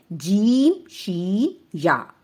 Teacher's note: زبان کا درمیانی حصہ جب اوپر تالو سے لگے تو یہ 3 حروف ادا ہوتے ہیں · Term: حروف شجریہ